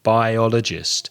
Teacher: again four syllables stress the second syllable